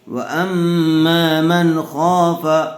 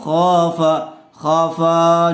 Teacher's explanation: خا کو تھوڑا کھینچیں گے، کیوں؟ اس لیے کہ زبر والے حرف کے بعد الف مد آیا ہوا ہے اور فا کے اوپر صرف زبر ہے، اس لیے فا کو جلدی پڑھیں گے